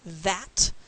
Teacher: let me make the TH sound. It is in fact my tongue touching my teeth. That's lingua dental.